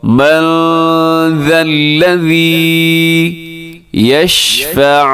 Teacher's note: یہاں نون ساکن کے بعد ذال ہے تو یہاں اخفا کریں گے